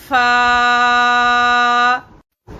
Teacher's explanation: اس کے بعد جو اس کا شفتان کا آخری حرف ہے وہ ہے فا۔ جب اوپر کے دونوں دانتوں کا سرا جب نچلے ہونٹ کے گیلے حصے کو لگے تو فا بڑی نرمی سے ادا ہو جاتا ہے